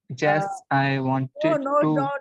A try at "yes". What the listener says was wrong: Not Jess. Again, you said Jess.